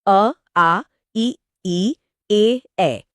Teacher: इसमें होंठ गोल नहीं होते बल्कि सामान्य या फैले हुए रहते हैं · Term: अवृत्त मुखी, अवृत्तमुखी